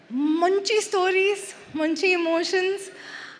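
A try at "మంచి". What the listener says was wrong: Yes, but you said munchi munchi. It's not munchi munchi. It's manchi manchi. So, munchi means drowning. Manchi means good.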